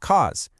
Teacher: Elision happens to one single word. Think about how because loses its first syllable to become cause. It's an act of reduction.